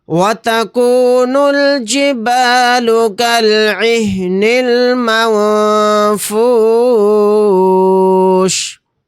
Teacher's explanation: یہاں پر نون ساکن کے بعد فا آ گیا تو یہاں پر اخفا کا قاعدہ ہوگا کیونکہ فا اخفا کے 15 حروف میں سے ایک حرف ہے. یہاں پر نون کی آواز کو ناک میں چھپا کر پڑھیں گے.